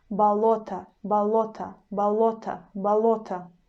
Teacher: we pronounce this o in the end like a very short ah